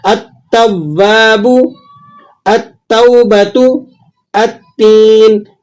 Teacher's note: التواب، التوبۃ، التین، ان تینوں مثالوں میں آپ دیکھیں کہ تا پر الف لام داخل ہوا لیکن آپ نے حمزہ کو ڈائریکٹ تا سے ملا کر پڑھا، لام کو بیچ میں سے آپ نے گرا دیا